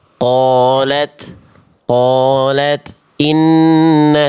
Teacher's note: Tak sukunnya jangan mantul. Percikan aja.